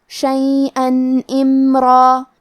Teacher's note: الف حروف الاظہار میں سے ہے اور اظہار کا معنی ہے ظاہر کرنا، اور کیونکہ تنوین کی اصلیت نون ساکن ہے تو ہم یہاں تنوین ظاہر کریں گے اور اسے نون ساکن پڑھیں گے اور بغیر غنہ سے یہ حکم کو ادا کریں گے